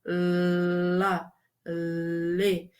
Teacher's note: a língua ela se posiciona de um modo em que o ar vai passando na lateral, né, da língua